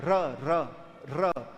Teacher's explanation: जीवा के आगे की जो नुक्की है वो बिलबिलाती है, कांपती है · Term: प्रकंपित व्यंजन